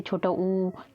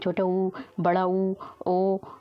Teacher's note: वे स्वर जिनका उच्चारण करते समय ओष्ठ, यानी जो आपके होठ हैं ओष्ठ गोल हो जाते हैं। ऐसे स्वर होते हैं जिनको बोलने में हमारे होठ हैं वो क्या हो जाते हैं, गोल हो जाते हैं। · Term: वृत्ताकार स्वर